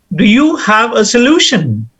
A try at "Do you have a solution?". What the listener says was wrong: No, you've used a falling tone. Solution is a falling tone.